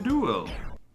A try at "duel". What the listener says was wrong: No, you pronounce it with a u sound instead of ooh sound.